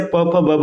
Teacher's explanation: आपके दोनों होठ आपस में टच होंगे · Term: ओष्ठ